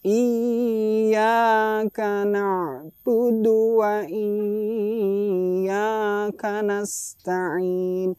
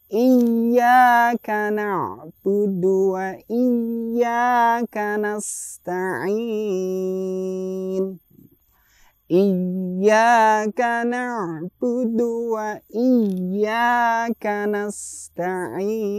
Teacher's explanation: Dalam ya yang bertasjid itu tidak ada hukum gunnahnya. Dalam ilmu tajwid tidak ada gunnahnya. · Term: ditekan